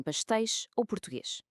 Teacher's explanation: é o som do s no final de uma sílaba. Ele transforma-se num som de ch, como em pastéis ou português.